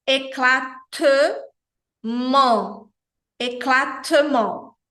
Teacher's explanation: É uma nasal, a gente pronuncia on, com os lábios mais abertos, e o T na posição final é uma consoante muda. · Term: nasal 1